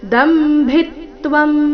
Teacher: ದ ಮತ್ತೆ ಭಿ ಮೇಲೆ ಆಘಾತ